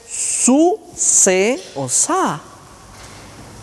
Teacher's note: Cuando hacemos la S, necesitamos que el predorso se eleve para hacer la fricción en la región alveolar. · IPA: [s]